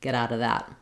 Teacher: this is a context where native speakers often will drop that V sound